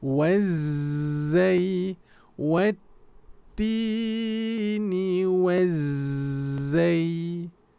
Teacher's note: There's a shadda emphasis for the zai. How long you hold the ta shadda, that is how long you need to drag that z.